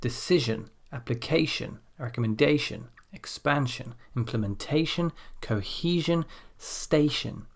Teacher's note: So here the stress falls on the syllable before the suffix.